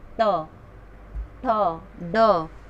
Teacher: मूर्धन्य वर्ण है मतलब इसे हम मूर्धन के सहारे से बोल सकते हैं